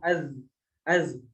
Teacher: Masih ada suara yang mengalir ketika kita mengucapkan huruf zal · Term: rokhawah